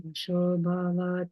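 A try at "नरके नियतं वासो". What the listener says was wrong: Okay, there were a couple of vowels that you shortened. Remember this vaso. Narake niyatam vaso.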